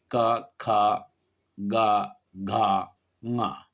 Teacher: बीच का पिछला हिस्सा है वो हिस्सा ऊपर उठता है और जो तालु है उसको स्पर्श करता है, तब ये व्यंजन बोले जाते हैं। और इनमें जो ये व्यंजन हैं वो हैं हमारे क, ख, ग, घ, ङ।